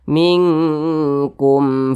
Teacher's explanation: ba di depannya bukan huruf mim maka hukumnya adalah izhar syafawi izhar syafawi dibaca jelas tidak berdengung